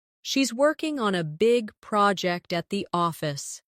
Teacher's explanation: Stress, working, big, project, and office. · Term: rhythm